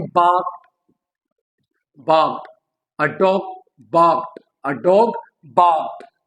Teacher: ed, d becomes t. Why? Because d is voiced and the voiceless counterpart of d is t. t जो है वो voiceless है and d is voiced, whereas k जो है k is voiceless as well and k का जो counterpart है voiced, that is g.